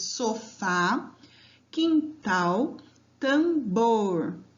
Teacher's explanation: Todas as últimas são sílabas tônicas, por isso são oxítonas.